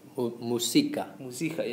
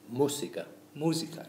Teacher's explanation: you can hear that we stressed the U where the uh the accent is